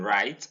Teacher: It's an open front closing diphthong. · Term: the diphthong I